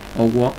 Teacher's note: Owo, sin hacer vocal abierta, owo, tono bajo de las dos vocales